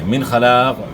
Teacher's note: فی الآخرۃ, فی الآخرۃ آخرت میں, من خلاق کوئی حصہ. نون ساکن کے بعد حروف حلقی میں سے خا ہے, تو یہاں اظہار ہوگا نون ساکن میں, یعنی غنہ نہیں ہوگا